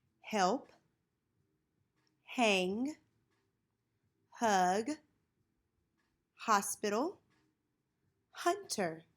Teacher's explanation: The H sound is not blocked. The mouth is open, but the H sound is a consonant sound because it is unvoiced.